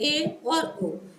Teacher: Half close, अर्थात मुख द्वार आधा बंद रहेगा।